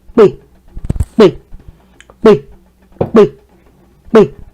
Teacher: My tone gets low when I say be, be, be, be.